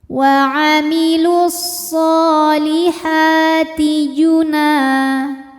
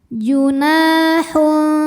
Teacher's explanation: Sebab ada alif yang sebelumnya berharokat fathah, maka huruf nun dipanjangkan 2 harokat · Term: mad tabi'i zahiri